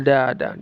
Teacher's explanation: nun sukun bertemu dal ikhfa disamarkan lalu didengungkan daada dengungnya dua harakat saja